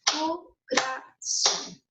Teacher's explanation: La sílaba se carga en son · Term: sílaba tónica